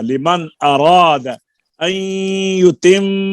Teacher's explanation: लिमन यहाँ पर आगे हमजा आ गया है, इजहार होगा